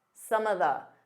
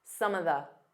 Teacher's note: Instead of saying of, you can just do an unstressed some of the. So it sounds like one word.